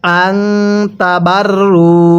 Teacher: এই নুন সাকিনের পরে তাটি হলো ইকফার হরফ, এজন্য আমরা নুন সাকিনটিকে গুন্নাহ করে পড়ব।